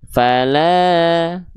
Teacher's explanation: Yang faali ayun karena dia fathahnya enggak ketemu sama alif. Yang la ini dua kali ayun karena fathahnya ketemu sama alif.